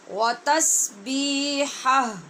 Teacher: ہا کی آواز زبر کے ساتھ پڑھنی ہے اور آگے ہا کو ساکن کرنا ہے